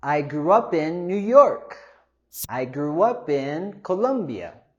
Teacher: We have our long vowel sound in grew, oo, and also our consonant cluster in grew, in the gur.